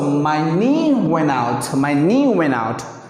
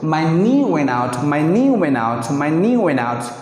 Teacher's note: You can't hear the T sound.